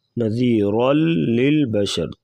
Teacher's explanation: تنوین کے بعد لام آ گیا ہے حروف جر ملون میں سے، یہاں پر ادغام کریں گے غنے کے بغیر